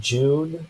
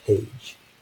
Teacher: the d and the zh, or the voiced postalveolar affricate. This is the first sound in June, or the last sound in page.